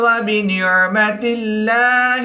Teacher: اس میں دلالت اللہ عز و جل کے لام سے پہلے حرف نیچے زیر ہے تو اس لام کو ہم باریک پڑھیں گے، پر نہیں کریں گے۔